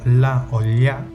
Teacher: donde el aire sale por los lados de la lengua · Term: laterales